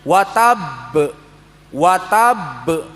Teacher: Watab tidak terus berhenti tapi dia balik lagi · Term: qalqalah kubra